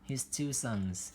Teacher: Two sons thì ở đây chúng ta sẽ xuống giọng một chút xíu ở đây ha.